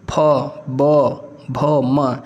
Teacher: कहते हैं ओष्ठ व्यंजन जैसे आप बोलेंगे प तो क्या है हमारे दोनों ओट मिलते हैं · हमारे जो दोनों ऊपरी और निचले ओठ है य दोनों आपस में छू जाते हैं यानी कि दोनों आपस में सटते हैं